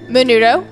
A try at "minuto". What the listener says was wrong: You did a D. You did a D. They did a T.